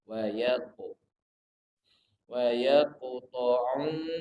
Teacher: Wa yaqta'u qaf huruf qal qalah. Qaf sukun dipantulkan.